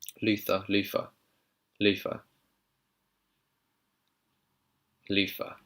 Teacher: British people sometimes drop the th to an F sound.